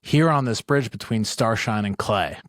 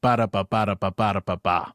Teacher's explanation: we have this long section followed by two short, or stressed followed by two unstressed. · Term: dactylic